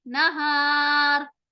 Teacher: الف کے پہلے ہار ہے جو کہ حروف مستعلیہ نہیں ہے, حروف مستفیلہ ہے, تو اب یہاں ہم آواز کو باریک کر کے پڑھیں گے